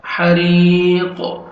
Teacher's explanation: ح اور را کے نیچے زیر ہے را کو باریک پڑھنا ہے 1 سیکنڈ کھینچنا ہے یا مدہ بھی ہے. حری اور قوف جب سٹاپ کریں گے تو ڈبل ساؤنڈ آئے گا حروف قلقلہ میں سے ہے قوف